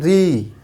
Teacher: ठीक है, तो मूर्धन्य स्वर को हम कौन से है हमारा, वह है ऋषि, सिर्फ एक है ऋषि, और इसको आप लिख सकते हैं मुंह के छत का अगला भाग, मुंह के छत का अगला भाग, जब दांत के एकदम जस्ट ऊपर जो है री, जब री बोलते हैं तो क्या होता है, जिह्वा हमारी दांत के ऊपरी वाले छत पे टच करती है, तो वो हमारा क्या कहलाएगा, मूर्धन्य कहलाएगा।